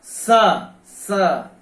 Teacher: क्योंकि इसका उच्चारण दांत से होता है, इसलिए इसको दंत्य स कहा जाता है। स जीभ जो है दांत के पास जाती है तो वहां से इसका उच्चारण होता है।